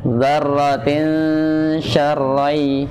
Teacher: itu tanwin bertemu dengan sya. Hukumnya ikhfa. Namun bacanya dengan bacaan awsat.